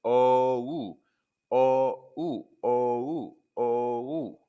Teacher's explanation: Start with an aw shape of the mouth, then glide into an oo sound, rounding the lips more. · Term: The O